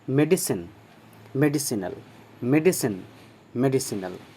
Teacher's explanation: दंत स, तालव्य श नहीं